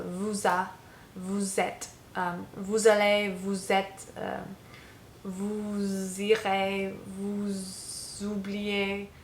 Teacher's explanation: even though it's not pronounced when you say vous, it takes on a Z sound in front of the vowels